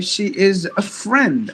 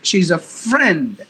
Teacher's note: When you stress the word on friend, it means it's a friend, not a wife, not a brother, not a sister, or something else.